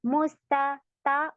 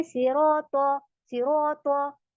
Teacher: ता है तो आ साउंड हमने देना है बारीक पढ़ना है और तो में हमारा ओ शप जाएगा ओ जाएगा और इसको हम हैवी बनाएंगे